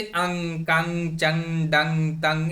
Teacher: तदनन्तरं वदति नासिकानुस्वारस्य, नासिका भवति उच्चारणस्थानम् अनुस्वारस्य